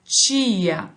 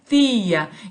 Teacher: Aqui no Rio de Janeiro, por exemplo, nós pronunciamos ti, esse som chiado, né? Tia, né? Em outros lugares é tia.